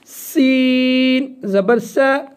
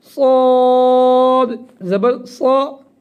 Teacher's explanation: یہ سا دونوں دانتوں کے درمیان سے سین سیٹی والی آواز اور صاد کو تھوڑا سا موٹا کر کے پڑھیں گے